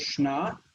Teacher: So the next word here is shna. Shna, the first syllable reduced, but it's the same as the Hebrew word shana